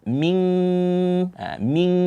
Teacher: ada nun mati bertemu dengan Kaf di sini ikhfa